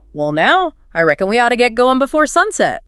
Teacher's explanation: the vowel sounds are elongated, giving it that laid-back, almost musical quality · You can really hear those vowels stretching out in now and going. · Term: Southern drawl